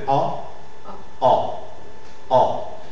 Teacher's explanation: la voyelle orale et postérieure mi ouverte arrondi hein voyez oral postérieur mi